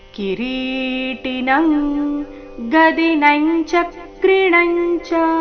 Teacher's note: ಸಮಂತಾ ದೀಪ್ತಾನಲಾರ್ಕದ್ಯುತಿಮ ಪ್ರಮೇಯಂ ಕಿರೀಟಿನಂಗದಿನಂಚ ಕ್ರಿಣಂಚ ಕಿರೀಟಿನಂ ಕಿರೀಟಿ ರಿ ದೀರ್ಘ ಟಿ ರಸ್ವ ಕಿರೀಟಿನ ಆದ ನಂತರ ಬಂದಿರುವ ಅನುಸ್ವರದ ಉಚ್ಚಾರಣೆ ಕ ವರ್ಗದ ಅನುನಾಸಿಕ · ಕಿರೀಟಿನ ಆದ ನಂತರ ಬಂದಿರೋ ಅನುಸ್ವರದ ಉಚ್ಚಾರಣೆ ಕ ವರ್ಗದ ಅನುನಾಸಿಕ